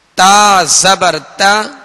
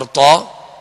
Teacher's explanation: تا باریک اور تو موٹا پڑھا جائے گا۔